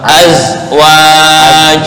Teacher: Ini makhraj za ya. Ujung lidah dengan gigi bawah. Azwaj. Kalau terlalu tercondong ke tengah lidah, itu lebih condong ke jim, bukan za.